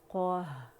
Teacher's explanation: हा भी बारीक है और क़ा मोटा है।